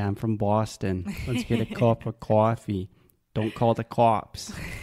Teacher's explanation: they have the traditional Boston accent which means they are changing a lot of vowel sounds making them more open